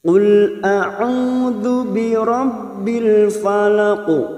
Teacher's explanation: huruf qaf ini jangan samakan dengan huruf kaf, karena huruf qaf yaitu huruf isti'la, huruf tebal. Qul lalu bertemu dengan huruf lam sukun.